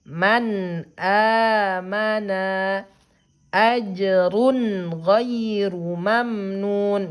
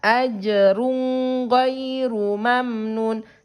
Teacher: gak boleh ditahan, gak boleh didengung didengungkan. Jadi sempurnakan bunyi suara nun sukunnya. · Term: izhar halqi